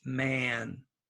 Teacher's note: this is a with a nose. And we do this before an N or an M